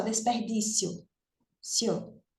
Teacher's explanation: A gente pronuncia como uma paroxítona. Numa emissão de voz só, desperdício. Cio. Veja que a gente não faz uma quebra aí dessa sílaba.